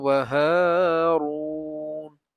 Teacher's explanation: এই রু মানে পুর করে পড়ছি, একটু উচ্চ আওয়াজে পড়ছি